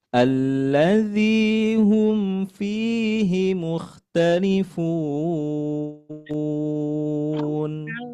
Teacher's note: Fi panjang dua harakat. Kemudian h-nya dibaca pendek. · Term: panjang 2 harokat